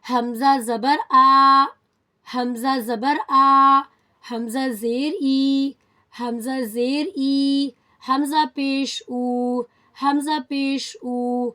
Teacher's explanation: حمزہ حلق کے نچلے حصے سے ادا ہوتا ہے، from the bottom of the throat